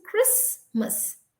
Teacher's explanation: so the t is completely silent it has no existence